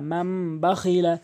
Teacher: ছোট মিম দ্বারা নুন সাকিনকে পরিবর্তন করছি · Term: ইকলাবের নিয়ম